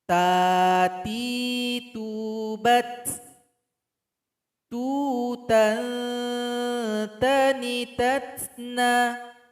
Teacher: sifat dari huruf ta itu adalah hamas. Ada nafas atau angin yang keluar ketika membacanya. Itu lebih terasa ketika dia disukunkan.